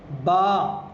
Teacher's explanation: دونوں ہونٹوں کی گیلی جگہ کا حصہ، یعنی جہاں تک ہمارے ہونٹ گیلے رہتے ہیں تھوک سے، ان دونوں جگہوں کو ہم ملائیں گے تو یہ با ہمارا ادا ہو جائے گا۔